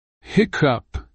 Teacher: the emphasis is on the first syllable heck and the cup should be pronounced quickly T thing pronunciation